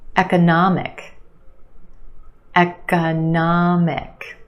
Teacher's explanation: We've got 4 syllables. The third syllable is your stressed syllable, na, the ah sound, economic.